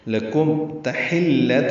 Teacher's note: حا وسط حلق سے ادا ہوگا، لام سے ملائیں گے، تائے مربوطہ ہے آخر میں، جلدی ادا کریں گے.